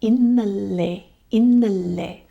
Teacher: innale is with the front L.